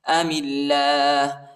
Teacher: میم کو لام کے ساتھ ملائیں گے اور اللہ کے نام کو باریک پڑھیں گے، نرم پڑھیں گے